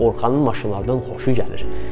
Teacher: Yoxsa burada mən xoşu sözünə vurdum, düzdürmü?